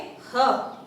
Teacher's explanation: प्राण वायु मुंह से थोड़ा सा तीव्रता के साथ बाहर को निकलती है · ह का उच्चारण होता है कंठ से, इसलिए इसको कंठ्य कहा जाता है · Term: स्वर यंत्र मुखी व्यंजन